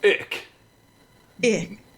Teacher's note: All the cool people in the north half of Germany say ick instead of ich